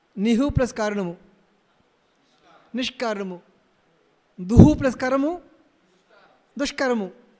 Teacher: అయితే ఇంకొక చిన్న విశేషం ఏంటంటే పొద్దునే చెప్పినట్టుగా ఉన్నారు నిస్సు దుస్సు ఉన్నప్పుడు ఈ కాలకి ఏమవుతుంది అంటే ఈ నిస్సు దుస్స షకారంగా మారిపోతాయి నిస్సులో దుస్సులో సకారం ఉంది కదా విసర్గ కదా నిస్సు అంటే నిహ్ అవుతుంది దుస్ అంటే దుహు అవుతుంది ఆ విసర్గ ఏమవుతుంది షకారం అవుతుంది